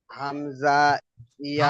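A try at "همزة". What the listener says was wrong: হামজা। হামজা। টান নয়, হামজা। হামজা। হ্যাঁ, তাড়াতাড়ি পড়তে হবে, এটা চিকে চিহ্ন দেওয়া আছে, ক্রস চিহ্ন দেওয়া আছে, অর্থাৎ এটা তাড়াতাড়ি পড়তে হবে, একটুও টান হবে না, একালিপও টান হবে না। হামজা।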